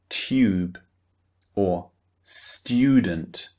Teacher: after the t sound, the T sound, we produce the y sound.